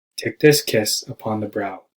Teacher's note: take this kiss upon the brow with emphasis on the words kiss and brow